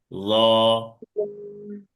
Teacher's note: ল মোটা আওয়াজে এক আলিফ টেনে পড়তে হবে।